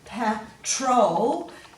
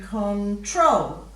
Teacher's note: And in control, you're going control. So the emphasis is on the second syllable in each of those words